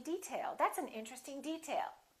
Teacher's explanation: if it's a noun we say detail that's an interesting detail first syllable stress